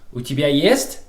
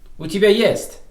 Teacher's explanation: But I can also change the intonation of this phrase so it's not a question. So the intonation of the word есть will change if it's a question or if it's not a question. «У тебя есть?» Question.